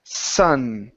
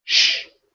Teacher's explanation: Sun okay tongue down Sun for the sh tongue comes up